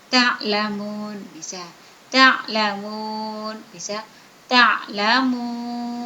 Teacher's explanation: mat tabi'i yang berada di akhir kalimat. Panjangnya 2, 4, dan 6. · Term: mat arid li sukun